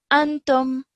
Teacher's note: Okay, because it is not a meme or a ba, then we do not produce a prolonged nasal sound whilst we're joining the ta to the meme